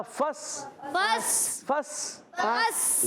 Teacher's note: سین سیٹی والا حروف ہے، حروف اصلیہ میں سے، حروف صفیریہ میں سے، سیٹی کے ساتھ ادا کریں گے۔ · ایک الف کا غنہ کریں گے، نون کو چھپائیں گے اور فا کو سین سے ملائیں گے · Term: اخفا